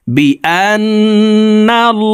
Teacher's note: আল্লাহ শব্দের আগের হরফে জবর আছে এই কারণে এই লামকে ল অর্থাৎ মোটা করে পড়তে হবে